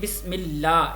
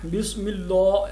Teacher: اس میں لام اللہ کا جو ہے وہ باریک پڑھا جا رہا ہے